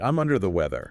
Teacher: vocal stress on the word under and let your vocal energy completely drop off on the word weather